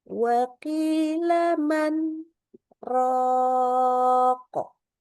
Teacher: Berhentinya man dengan izhar nunnya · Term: saktah